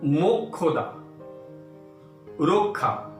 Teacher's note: শব্দের মধ্যে বা শেষে যুক্তক্ষ থাকলে কয়ের উচ্চারণ অক্ষত থাকলেও মূর্ধন্য ষ এর উচ্চারণ খ ধ্বনির মতো হয়ে যায়।